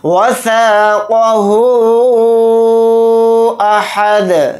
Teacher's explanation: और दाल साकिन बनेगा यानी दाल के ऊपर जज़म लगाएंगे तो इसके अंदर क़लक़ला भी होगा